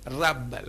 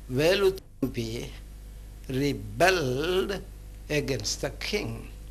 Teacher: For instance, let's take the word represented by the spelling REBEL. If it is used as a noun, we place the stress on the first syllable and we pronounce the word rebel. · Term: word stress